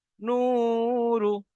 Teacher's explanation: ওয়াও সাকিনের ডান দিকে পেশ এসছে, ওয়াও মাদ্দাকে একালি পরিমাণ টান দিয়ে পড়তে হয় · রর উপরে পেশ এসছে, হারাকাতের পড়াকে তাড়াতাড়ি পড়তে হয়, টান দেওয়া নিষেধ।